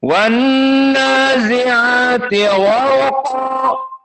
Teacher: nun di sini musyaddadah wujubul gunnah. Wan masuk dari hidung